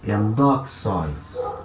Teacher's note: Então agora sim, essa última sílaba é uma sílaba longa, apesar de ser um ditongo com iota. Então, sílaba longa, o acento anda uma casa para frente.